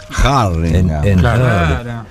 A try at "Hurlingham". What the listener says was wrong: En realidad, la pronunciación correcta, ojo que la segunda H también se marca, es Hurlingham. Hurlingham, claro, no es Hurlingham, es Hurlingham, claro. Porque tiene una segunda H.